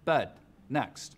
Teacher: pushes the dress vowels back in the mouth so words like bed next sound like bud next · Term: northern cities shift